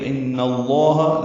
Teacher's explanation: الا ان، نون مشدد پہ غنہ ہے، نون کی زبر کو لام اسم جلالہ سے ملائیں گے تو ان اللہ، لام اسم جلالہ کو پر پڑھیں گے